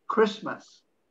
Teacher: The T is almost non-existent again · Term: silent T